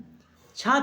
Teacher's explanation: छा छाता वाला होता है वो घोष नहीं है